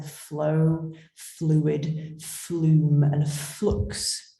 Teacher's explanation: can hear the aggression in that in the fl sat words that f is continuant and fricative so fricative means there's turbulence coming through like that being a continuant it can evoke meanings of continuity and liquidity